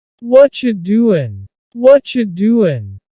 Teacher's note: the end of the word doing the G also gets cut out.